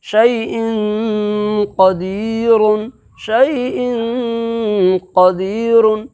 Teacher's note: میں سے قاف ہے، اس لیے اخفاء حقیقی ہوگا، اس لیے 2 زیر کی تنوین کی آواز کو ناک کے بانسا کے اندر میں آواز چھپا کر کے ایک الف کے برابر گنہ کے ساتھ ادا کریں گے